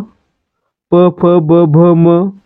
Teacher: यांचा उच्चार करताना काय होतंय तर ओठांची हालचाल होते म्हणून यांना काय म्हणतो आपण औष्ठ्य वर्ण